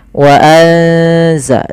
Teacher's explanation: Suara nunnya disamarkan ke zai. Wa anza sambil ditahan bacaan eng-nya atau bacaan gunnah ikhfa ya, dengungannya.